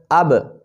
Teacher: جب آپ اب کہیں گے تو با کا مخرج کیا؟ ہونٹوں کا ملنا۔